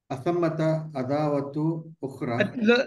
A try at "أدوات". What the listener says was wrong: No عداوة. There's no alif after the dal. نعم أدوات هن.